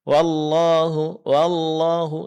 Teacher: Kesalahan yang lain yang terjadi di dalam melafalkan huruf waw adalah pengucapan huruf waw yang tidak disertai dengan dimonyongkan kedua bibir ke depan